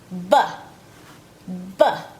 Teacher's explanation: the B sound is pronounced with lips only, no teeth